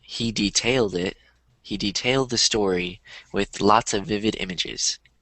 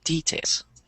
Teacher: the word is being used as a verb so the stress is on the second syllable